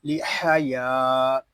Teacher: یہاں یا کو ایک الف تک کھینچ کر پڑھیں گے کیونکہ یہاں الف مدہ ہو رہا ہے۔ الف مدہ اس لیے ہو رہا ہے کہ الف سے پہلے زبر آ گیا ہے۔